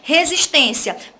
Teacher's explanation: itens tá bom das outras alternativas então se eu tenho resistência penúltima sílaba mais forte chamada de sílaba tônica uma palavra paroxítona